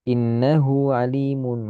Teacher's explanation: Hu harus panjang karena hu ketemu huruf hidup sebelumnya huruf hidup. Maka hu harus panjang.